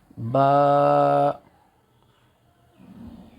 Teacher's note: यह वाले इसकी तरी वाले हिस्से से मिलकर बा निकलता है दोनों होठों की तरी वाले हिस्से से मिलकर बा अदा होता है